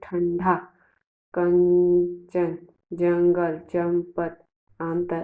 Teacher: अनुस्वार के उच्चारण में वायु नाक से निकलती है